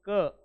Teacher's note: क म्हणताना बघा जीभ मागे गेली